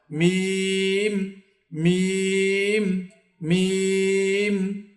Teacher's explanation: মিম মিম 2 ঠোঁটের শুকনো অংশ হইতে, অর্থাৎ এই একটু সামনের দিক থেকে 2 ঠোঁট একসাথে করে তারপর মিম হরফ উচ্চারণ করতে হয়। মিম 2 ঠোঁটের শুকনো অংশ হইতে উচ্চারিত হয়